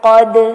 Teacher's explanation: قد دال کو یہاں بھی ہلائیں گے، کلکلا کریں گے